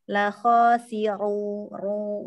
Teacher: Zo-nya tadi masih kurang naik pangkal lidahnya, itbaknya juga tambahkan lagi. Lalu ru, ro dengan harokat domah tebal